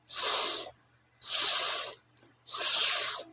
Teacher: The air squeezes through a tiny gap, a sharp hissing sound, like a snake. No throat vibration because it is voiceless.